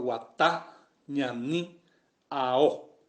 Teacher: Yo cargué mi voz en la última vocal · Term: acento fonético o prosódico